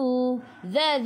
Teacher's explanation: dzi hujung lidah keluar pada gigi depan